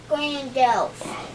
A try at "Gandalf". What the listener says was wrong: Gandalf? Gandalf! There's no Grand. It's not Grandolph.